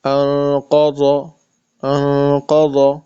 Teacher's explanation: ہم نے اخفا کرنا ہے، نون کو اپنی جگہ سے ہٹانا ہے